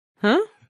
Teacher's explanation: usually it's a neutral tone but in this case you know because it's a question it's kind of like a second tone